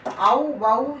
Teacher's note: ஔகார எழுத்து தனித்து வரும் இடங்களில் தனக்குரிய 2 மாத்திரை அளவில் முழுமையாக ஒலிக்கிறது. When it comes to ஔகாரம், it will have the full மாத்திரை sound.